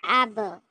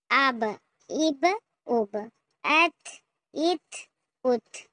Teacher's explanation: सांस को मतलब आवाज को जाम कर लेना है। रोक लेना है। जैसे अब जैसे यहां पर देखें अ रोक लेंगे। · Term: साकिन